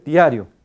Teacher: La vocal I, siendo semivocal, siempre debe pronunciarse más breve que O.